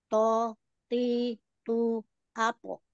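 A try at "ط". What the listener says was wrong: Umi, angkat sedikit yuk pangkal lidahnya supaya tidak to, ti, tu, atau. Tapi, oh, buka pangkal lidah itu kalau terangkat dia agak agak tegang gitu ya rasanya. Jadi, tidak to, ti, tu, atau.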